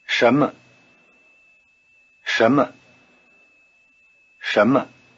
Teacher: in Soma is the same as the initial consonant in shape the tip of the tongue is curled back in the retroflex position